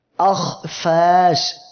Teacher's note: জিহ্বার গোড়া উপরের দিকে চলে যাচ্ছে যাওয়ার সাথে সাথে অক্ষরটি মোটা হয়ে যাচ্ছে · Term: ইস্তেলা